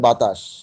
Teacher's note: আকারটা লোপ পেয়েছে, এটা হচ্ছে মধ্য স্বরলোপ